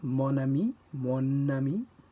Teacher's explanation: The N from mon links to ami. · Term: liaison